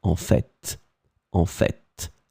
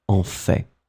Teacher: some persons, and I am among them, pronounce the final T